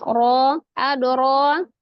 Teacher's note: Ro-nya mad ada alif kecil, dibaca dengan tafhim tebal karena berharakat fathah.